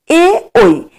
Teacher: এ ঐ বর্ণগুলোর উচ্চারণ স্থান হলো কণ্ঠ ও তালু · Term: কণ্ঠতালব্য বর্ণ